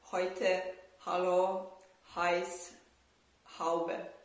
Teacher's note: So the air goes out of the mouth and there is almost no obstruction. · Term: voiceless glottal fricative